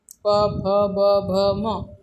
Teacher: म वर्ण से उच्चारण स्थानम किम, म वर्ण का उच्चारण स्थान क्या है। प फ ब भ म, होठ लग रहा है तो ओष्ठ्य है